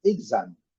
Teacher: É uma palavra de duas sílabas, exame. A sílaba forte é a primeira